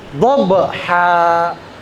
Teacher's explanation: Jadi qalqalah sugra dia qalqalah suaranya ada e-nya tapi ringan aja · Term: qalqalah sugro